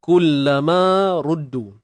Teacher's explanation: Ma asli, ra baris depan tebal. Ingat, ra baris depan tebal. Ma ruddu. Du panjang.